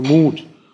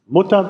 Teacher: Mut ist das normale U und Mutter ist dieses etwas zentralisierte U.